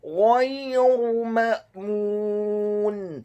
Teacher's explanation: Kata ma'mun, huruf mimnya dibaca fathah 1 harokat. Huruf alif atau hamzanya dibaca tipis, sukun. Kemudian huruf mim yang kedua dibaca dhammah 2 harokat karena setelahnya ada huruf wawu sukun, dan di akhir ayat huruf nunnya dibaca sukun.